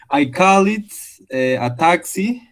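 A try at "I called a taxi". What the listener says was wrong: Fíjate que el primero termina con D. O sea que todo lo que está pintado con rosa va a ser D. I called, I used, I arrived.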